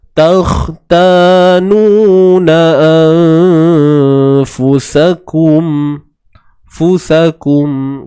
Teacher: Nun mati bertemu fa ni ikhfa hakiki. Takhtanuna sembunyikan nun mati tu, jangan sebut nun tepat pada makhrajnya, dan dengung ringan, biasa je. Dan bersedia nak sebut huruf fa.